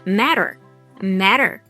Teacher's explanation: First off, this word matter was used twice, but it wasn't pronounced as matter. These movie characters are American, so they transformed this into a tap T, which sounds like a soft D.